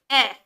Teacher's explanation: जब हम ए बोलते हैं तो हल्का सा सिर्फ हमारा मुंह खुलता है और हमारे होठ भी गोल नहीं होते। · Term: आवृतमुखी